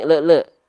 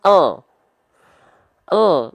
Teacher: ya ada bunyi Le Le harusnya enggak boleh ada bunyi Le enggak boleh bunyi vokal yang keluar ketika melafalkan El di ujung pelafalan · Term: bunyi konsonan el